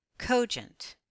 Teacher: most words with two syllables will accent on the first syllable let's blend the two syllables together accenting the first syllable